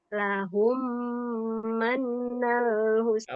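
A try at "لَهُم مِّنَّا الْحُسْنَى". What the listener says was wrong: Awas, mannya tahan, ada nun bertasdid.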